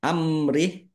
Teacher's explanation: amrih mim sukun bertemu dengan huruf ro bacaan izhar syafawi dibaca jelas amrih waqaf h-nya dibaca sukun Karena wakaf dan wakafnya pendek tidak ada tanda panjangnya.